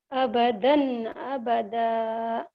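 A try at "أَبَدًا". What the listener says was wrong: Bukan abadan. Jika dihentikan bacanya abada gitu ya. Jadi, kalau dihentikan gitu. Abadan, abada.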